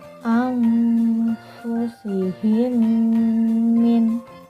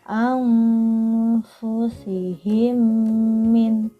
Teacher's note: Dan cara membacanya yaitu dengan memasukkan suara mim yang bersukun atau yang berharokat mati kepada mim yang berharokat hidup di depannya, dengan didengungkan dan ditahan 2 harokat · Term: idgham mimi